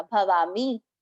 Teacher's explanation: मी छोटी मात्रा वहां ध्यान रखना है कि अपने को उच्चारण में ज्यादा समय नहीं देना।